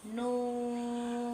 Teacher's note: Nun, ada waw, ada nun mati. Kita baca nunnya itu sebanyak 6 harokat.